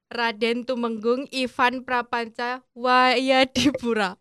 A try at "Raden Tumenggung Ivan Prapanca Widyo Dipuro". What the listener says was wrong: Oh ya, yang benar Raden Tumenggung Ivan Prapanca Widyo Dipuro ya. Widyo. Kalau ditulis memang Widya. Tapi kalau dalam pelafalan Jawa A-nya ada titik O. Widyo Dipuro.